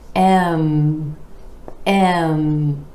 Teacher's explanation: bringing the lips together for the M consonant with air flowing out through the nose